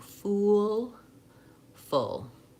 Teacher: And full is the good book vowel, that's lax. So both are back vowels. Both are rounded. My tongue is in the back and high in my mouth. But ooh, I have a lot more lip rounding.